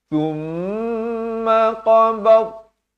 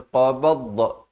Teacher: Jangan berikan lantunan. Kerana dha bukan huruf lantunan. Bukan qalqalah. Jangan baca qabadda.